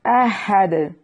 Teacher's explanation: یہاں وقف کی صورت میں دال کو خوب واضح کریں گے، یہ حروف قلقلہ میں سے ہے، اس لیے اس پر قلقلہ ہوگا